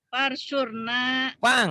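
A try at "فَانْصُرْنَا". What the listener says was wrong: Bukan par. Pang. Pangsurna.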